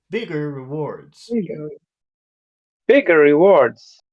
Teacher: you make the adjective bit higher and then the next word a little bit lower